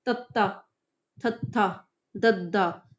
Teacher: ਦੰਤੀ ਧੁਨੀਆਂ ਦੇ ਉਚਾਰਨ ਵੇਲੇ ਸਾਹ ਦੀ ਹਵਾ ਨੂੰ ਜੀਭ ਦੀ ਨੋਕ ਦੁਆਰਾ ਉਤਲੇ ਦੰਦਾਂ ਦੇ ਪਿਛਲੇ ਪਾਸੇ ਰੋਕਿਆ ਜਾਂਦਾ ਹੈ। ਭਾਵ ਕੀ ਹੋਇਆ ਕਿ ਜੀਵ ਦੰਦਾਂ ਦੇ ਅੰਦਰਲੇ ਪਾਸੇ ਨੂੰ ਸਪਰਸ਼ · ਜੀਭ ਜਿਹੜੀ ਦੰਦਾਂ ਦੇ ਅੰਦਰਲੇ ਪਾਸੇ ਨੂੰ ਸਪਰਸ਼ ਕਰਦੀ ਐ